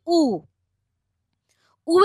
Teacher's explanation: পশ্চাৎ অর্থাৎ জীবটা পিছিয়ে যাচ্ছে এবং ঠোঁটটা কুঞ্চিত হয়ে যাচ্ছে